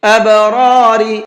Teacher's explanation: پہلے والے را کو پر کر کے پڑھیں گے اور دوسرے را کو باریک پڑھیں گے۔